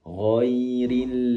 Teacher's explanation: Lamnya dipastikan durasi penempelan lidah bagian depan ke langit-langit lebih lama sehingga tertunaikan sifat inhirafnya tadi.